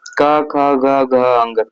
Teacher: क वर्ग जो है पूरा कंठ ध्वनि है